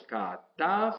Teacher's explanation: Mire dónde hacíamos el acento, no lo hacíamos al final, lo hacíamos en la sílaba precedente. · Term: sílaba tónica